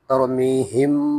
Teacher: یہاں پر را کو موٹا کریں گے کیونکہ را ساکن ماقبل زبر ہے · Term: را موٹا